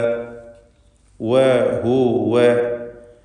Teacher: അസ്സാലിഹാതി വഹുവ മുഅ്മിനുൻ ഫലാ, വഹുവ, വാവ് രണ്ട് ചുണ്ടുകളിൽ നിന്ന് തന്നെ ഉച്ചരിക്കുക. ശേഷം ഹ ദമ്മ നൽകി.